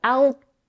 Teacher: When we have a t at the end of a word, we very often don't release the air. We don't blow the air out of our mouths, and we just hold it.